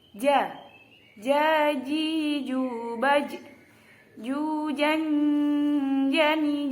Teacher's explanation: Jadi makhrajnya huruf jim itu tengah lidah dan tengah langit-langit. Jadi kalau membaca huruf jim itu tengah lidah rapat dengan langit-langit.